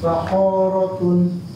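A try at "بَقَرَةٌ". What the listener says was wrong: Bakorotun. Bako. Kok. Kok. Jangan panjang. Bakorotun.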